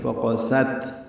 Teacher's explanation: فقست، قاف موٹا پڑھیں گے، سین پتلا پڑھیں گے. فقست، تا ساکن ہے، یہ باریک پڑھا جائے گا، اس پہ حمز ہے